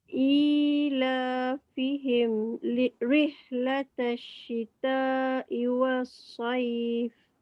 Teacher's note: I panjang 2, la panjang 2.